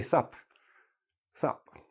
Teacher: so we always drop the T because we just don't need it